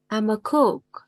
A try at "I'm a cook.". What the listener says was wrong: Nó đọc hơi ư. Nó đọc hơi ư.